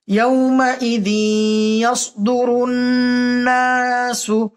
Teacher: ইয়াকে তাসদীদ দিয়ে গুন্না করে পড়তে হবে